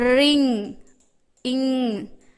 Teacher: என்னும் ஜியும் சேர்ந்து வர இடத்துல இங் அப்படின்ற சவுண்டு வரும்